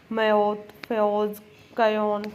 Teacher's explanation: ਐ ਦੀ ਧੁਨੀ ਮੁਲਤਾਨੀ ਦੇ ਵਧੇਰੇ ਇਲਾਕੇ ਵਿੱਚ ਨਹੀਂ ਉਚਾਰੀ ਜਾਂਦੀ ਇਹਦੀ ਥਾਂ ਤੇ ਦੋ ਸੰਧੀ ਸਵਰ ਆਓ ਵਰਤਿਆ ਜਾਂਦਾ